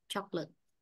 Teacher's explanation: đây có hai âm tiết thôi choc Và ở đây là trọng âm rơi vào âm tiết một